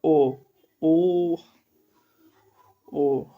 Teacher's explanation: कंठ और ओष्ठ यानी हमारा कंठ से भी आवाज निकल रहा है। ओष्ठ से भी आवाज निकल रहा है।